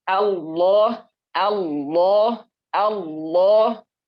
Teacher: itu lam ya ada huruf lam nya di tengahnya Nah itu cara pengucapannya adalah dia ditekuk lidahnya ya jadi lebih dalem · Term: lam tebal